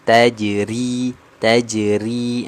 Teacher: huruf ro yang berharakat kasrah nanti wajib kita baca tarqiq ataupun tipis